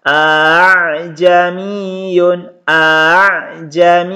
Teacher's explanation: hamzah yang kedua dibaca samar atau dibaca ringan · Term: tashil